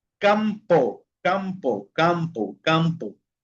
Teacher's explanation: Temos primero que cuando está al final sílaba, que cuando está al final de la sílaba, chicos, a diferencia que en español, porque en español nosotros cerramos los labios cuando la m está al final de la sílaba